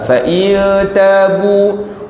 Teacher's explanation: fa in ta dengung, ikhfa hakiki, nun mati bertemu dengan ta.